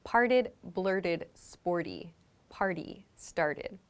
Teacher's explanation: you'll notice that that t sound becomes very soft like a d